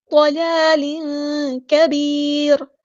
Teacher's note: ضلال کبیر، یا ساکن ہے، پھر اس کے بعد جو ہے ہم را کو وقف کرتے ہوئے ساکن کر دیں گے تو را ہمارا یہاں پہ باریک پڑا جائے گا · یہاں پہ تنوین کے نون کی آواز کو ہم چھپا دیں گے کیونکہ یہاں پر اخفا ہوگا · کریں گے، ضلال، ضاد ہمارا ہیوی لیٹر پورا ادا کریں گے، لام پہ کھڑا زبر ہے تو مد اصلی کریں گے